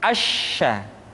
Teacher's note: Sya dikeluarkan dengan cara mengangkat tengah lidah kita ke langit-langit